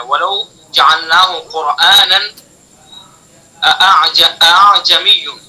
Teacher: اس کا پہلا حمزہ تحقیق سے اور دوسرا حمزہ ذرا نرم کر کے پڑھا جائے گا ، اس نرم کر کے پڑھنے کو تسہیل کہتے ہیں اور